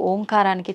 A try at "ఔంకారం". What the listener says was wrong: అది ఓంకారం కాదు, ఔంకారం. మీరు మనం పలకడమే దాన్ని తప్పు పలుకుతున్నాం. మనం మాట్లాడుతున్న ప్రతి మాటల్లో ఎక్కడో ఒక చోట అకారము ఉకారము మకారము ఉంటాయి. అకార ఉకార మకార అర్ధమాత్ర ఇది ఓంకార. అర్ధమాత్ర మకారం అన్నాడు. ప్లస్ ఆ. అర్ధమాత్ర అంటే ఔం అని ఉచ్చరించినప్పుడు అకారము ఉకారము రెండూ పలకబడి మూకారం దీర్ఘమవుతుంది.